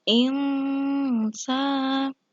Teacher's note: nun mati bertemu dengan sin, maka hukum bacaannya ikhfa, ya, samar-samar dengung